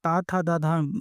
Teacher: जब आप त थ द धा बोलेंगे तो आपकी जीभ दांतों को टच होती है। तो इसलिए इनको दंत व्यंजन बोलते हैं।